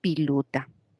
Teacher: la vocal e la confunde con la i